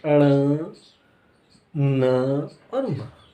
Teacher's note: नाक से भी आवाज आ रही, मुंह से भी आ रही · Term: अनुनासिक